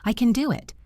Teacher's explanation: If I say this slowly and clearly, I pronounce can with a short A sound like cat.